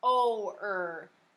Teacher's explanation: Remember how we talked about when a vowel is next to the letter R, the R dominates it, or the R kind of takes over, and you really only hear the R sound. But you do hear a little bit of the O.